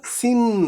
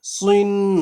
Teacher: সিন দুই জের ছিল সিন পাতলা করে, আর সদ দুই জের সুইন মোটা করে